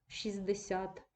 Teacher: це слово виняток із правила про спрощення в групах приголосних ми не вимовляємо Т